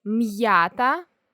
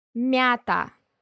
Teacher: So in the first word, M stands for the hard sound, while in the second, it stands for the soft sound. It's pretty much like m plus the soft sign. · The main difference between an otherwise identical word containing an apostrophe and one that does not contain an apostrophe is that there is a very small pause that forces you to enunciate the preceding consonant. It's never a vowel.